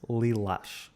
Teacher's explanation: Em português, o L faz o som L, conhecido em inglês como dark L, como na palavra lilás.